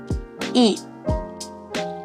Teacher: Dihasilkan dengan lidah di posisi depan, bibir tidak bulat dan mulut sedikit terbuka.